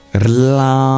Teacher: Starting with the root, which is the element of earth, corresponding to the approximant in the dental region, that's Rlam. It's a vibrating L, and it transitions into an anuswara, a nasalized sound.